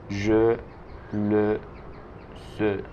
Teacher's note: Entonces, estas es de je, le, ce, son es muy cerradas. Es una vocal muy cerrada que se llama schwa, que es una vocal que se pronuncia e.